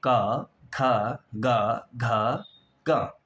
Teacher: अ आ और क वर्ग यानी क ख ग घ एवं ह और विसर्ग का उच्चारण स्थान जो है वो कंठ है। गले की सहायता से हम इन वर्णों को बोलते हैं।